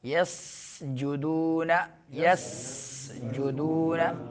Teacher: یسجدون سین کو باریک سیٹی نکالنی ہے، سا نہیں پڑھنا ہے، سا اور سین میں فرق ہے۔